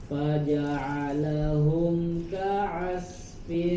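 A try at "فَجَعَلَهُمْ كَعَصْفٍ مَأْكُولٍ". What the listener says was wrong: Huruf shad tebal. Ka'asfim ma'kul.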